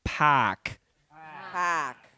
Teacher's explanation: So instead of park we have to move our vowel front p and then don't produce the r.